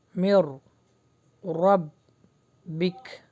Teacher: یہاں پہ نون اسکپ ہوگا اور جو میم ہے را سے ملے گا